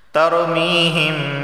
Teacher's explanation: یا ساکن سے پہلے زیر آیا ہے تو اسے ایک الف کے برابر کھینچ کر پڑھا جائے گا۔ میم یا زیر میم۔